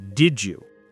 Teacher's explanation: The D sound at the end of did and the Y sound at the beginning of you often blend together to create a J sound. So did you becomes did you, as in, did you like the movie?